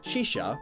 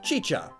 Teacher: they change the SH sounds into Ch sounds which is pretty interesting thinking instead of saying shisha they say